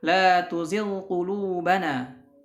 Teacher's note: mengidharkan ghain, ya, ketika bertemu dengan qaf